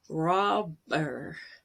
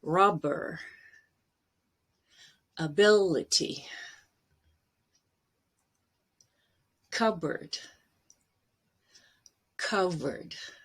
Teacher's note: in the middle of a word like robber you actually have to really stop the airflow or it will sound like a v